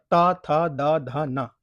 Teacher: ता के उच्चारण में जो जो आपकी जीभ है दोस्तों वो दांतों पे लग रही है, सामने वाले दांतों पे लग रही है, इसलिए इसको दंत कहते हैं।